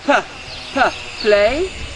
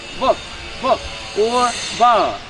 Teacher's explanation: So pa is aspirated sound, an aspirated sound. You pronounce it with a strong puff of air.